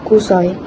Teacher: Perkataan kusoi mengandung diftong AI yang gabungan vokal O dan I yang dilafazkan sebagai satu unit bunyi kusai atau kusoi dalam dialek Melayu Sarawak.